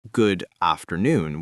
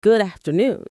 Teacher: The D from good glides right into afternoon. >> So it ends up more like good afternoon. · You wouldn't hear it as good afternoon with that hard stop. The D from good glides right into afternoon. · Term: connected speech